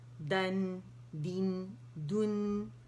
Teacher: दाल बारीक है, नून बारीक है, ज़बर के साथ आवाज़ ऊपर जाएगी, नून से मिलेगा।